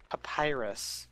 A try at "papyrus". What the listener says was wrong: It is not papyrus. P-A-P-Y-R-U-S. That is not papyrus. There's no third P in there.